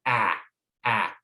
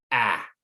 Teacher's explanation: make the sound ah that ball would probably fall out because your jaw is dropped and your tongue is forward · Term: short a sound